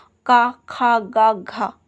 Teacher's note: कंठ ध्वनियाँ, जो कंठ है मतलब जो गले से निकलती है।